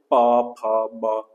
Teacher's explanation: ઓષ્ઠ્ય હોઠથી બોલાતો શબ્દ બે હોઠ ભેગા થાય